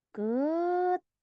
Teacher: Ket benar-benar huruf T. Tidak boleh ada bunyi H-nya.